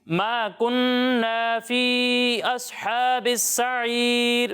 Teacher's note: یہاں پر نون مشدد ہے. کیا ہے؟ نون مشدد. اور یہاں غنہ کرنا ہے اور غنہ کی مقدار ایک الف کے برابر ہوتی ہے